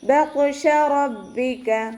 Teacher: റ ഫതഹ ആയതുകൊണ്ട് നമ്മൾ ഉയർത്തി ഉച്ചരിച്ച് കൊടുക്കുക. ബാക്ക് ശ്രദ്ധ വന്നു, 2 കൗണ്ട് 2 ഹർഫുകൾ ഉച്ചരിക്കുന്ന കനം കൊടുക്കുക.